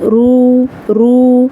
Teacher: را کو موٹی آواز کے ساتھ ادا کیا جائے گا، پر پڑھا جائے گا